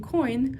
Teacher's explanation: the merging of two vowel sounds into one gliding sound like in coin